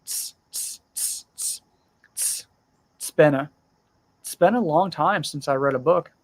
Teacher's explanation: when its is the first word in the sentence we often don't pronounce the vowel sound it we just say it's been a it's been a long